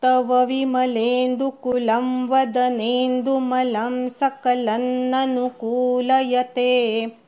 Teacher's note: सकलन लवरच्या अनुस्वाराचा अर्धा न म्हणायचा. सकलन ननु नु ऱ्हस्व आणि कू दीर्घ.